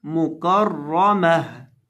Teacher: और वक़फ़ की हालत में मुकर्रमह, आखिर से गोल ता को हाय साकिना से बदल देंगे